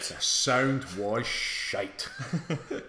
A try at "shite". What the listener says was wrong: And you got to pronounce the T. It was shite.